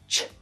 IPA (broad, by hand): ʈʃ